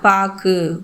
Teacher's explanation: இந்த சொல்லில் பாக்கு அப்படிங்கிறதுல கூ அப்படிங்கிறது முழுமையாக ஒலிக்குதா? கூவில் இருக்கிற உகரம் குறைந்து அரை மாத்திரையில் தான் ஒலிக்குது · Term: குற்றியலுகரம்